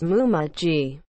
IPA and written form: muːmə dʒiː (Muma Gee)